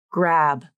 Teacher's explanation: Notice how my lips are already rounded for the R consonant even as I say the G consonant.